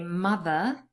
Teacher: I am a non-rotic speaker. So I would just usually say mother. There's no riff for me at the end. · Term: non-rhotic speaker